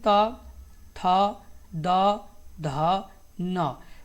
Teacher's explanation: दंतय में कौन कौन से आते हैं? तो आपके आते हैं त, थ, द, ध, न।